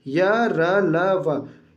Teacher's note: अंतस्थ व्यंजन जिन व्यंजनों के उच्चारण में श्वास का अवरोध बहुत ही कम होता है